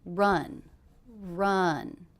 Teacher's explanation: Now this is a question, but did you notice the intonation went down at the end?